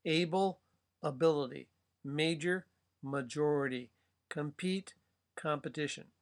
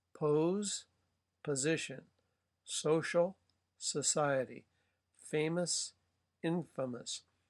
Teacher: all of these vowels when they shift like that, um, you're moving into a schwa. Um, but nevertheless, the root is preserved.